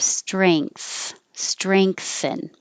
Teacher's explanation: Strengthen with the ang, with the back of the tongue going up.